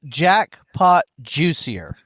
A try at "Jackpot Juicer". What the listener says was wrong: Jackpot Juicer, not juicier, Jackpot Juicer. Juicer, yeah. And so, yes, it's Jackpot Juicer.